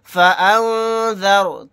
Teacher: یہاں پر نون ساکن کے بعد ذال آ گیا تو یہاں پر اخفا کا قاعدہ ہوگا، کیونکہ ذال اخفا کے حروف میں سے ایک حرف ہے۔ یہاں پر رائے ساکنہ کو موٹا یعنی پر پڑھیں گے، کیونکہ رائے ساکنہ سے پہلے زبر آ گیا